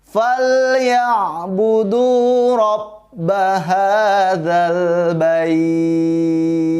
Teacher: Nah, di ujung ayat 3 ada ta. Huruf ta-nya jika mati, maka kita pakai sifat huruf ta ketika mati, yaitu namanya hams. Ada suara lebih yang keluar dari mulut kita.